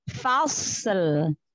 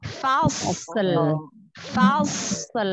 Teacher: Sotnya tebal, lamnya tipis. Fasl. Fasl. Tipiskan ya lam sukunnya.